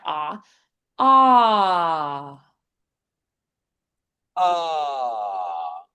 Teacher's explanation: So, the roof of the mouth is lifting. The A is the most open vowel.